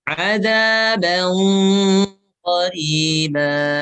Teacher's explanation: Ikhfa itu ada gunahnya ditebalkan. Karena ketemu dengan qaf.